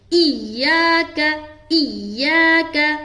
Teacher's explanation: ایاک شد کا معنی ہے کہ آپ کو ملانا ہے، شد والے حرف کو 2 مرتبہ پڑھا جاتا ہے، تو پیچھے والے حرف سے جب ملائیں گے تو ہماری آواز سخت قسم کی ہونی چاہیے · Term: تشدید